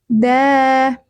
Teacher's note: Punggung ujung lidah menyentuh pangkal gigi seri atas.